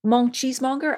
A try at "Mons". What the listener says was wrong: Yeah, no, it's Mons. You can pronounce the S.